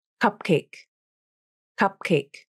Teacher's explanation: Native speakers typically hold the P in cupcake. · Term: unreleased consonant